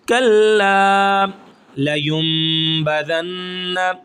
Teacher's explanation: کلا کو ہم ایک الف کے برابر کھینچیں گے · لیم، اب یہاں پہ نون ہے، نون کے اوپر جزم ہے، نون ساکن ہے، لیکن ہم میم کی آواز کیوں نکال رہے ہیں؟ اس کو کہتے ہیں اقلاب